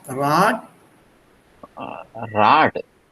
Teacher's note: This is because of the pronunciation, which has undergone a change and a shift, which is there even in Sanskrit. The D at the end is pronounced like a T.